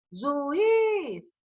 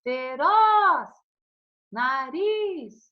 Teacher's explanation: todas as sílabas tônicas, nós descobrimos aqui que serão as últimas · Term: sílaba tônica